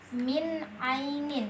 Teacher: nun mati bertemu dengan ha maka dibaca jelas tanpa didengungkan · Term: izhar